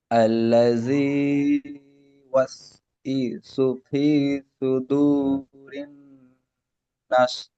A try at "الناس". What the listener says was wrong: নাস, এখানে টান দিয়ে বলেন। নাস। এখানে যে নাস, নাস একালিফ টান হবে। নুন আলিফ সিন জাবার নাস আয়াতের শেষে।